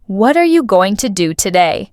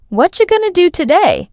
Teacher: What are you becomes whatcha. Going to becomes gonna.